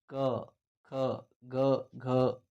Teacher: ಕ ವರ್ಗದ ಅಕ್ಷರಗಳು ಎಲ್ಲಿ ಹುಟ್ಟುತ್ತವೆ ಅಂದ್ರೆ ಇವುಗಳು ಗಂಟಲಿನಲ್ಲಿ ಹುಟ್ಟತಕ್ಕಂತದ್ದು ನೋಡ್ತೀವಿ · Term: ಕೆಂಠಾಕ್ಷರಗಳು